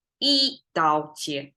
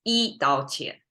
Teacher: There's not even a falling tone anywhere, right? There's no tonation change. Everything is flat. It's like blend together. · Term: flat tone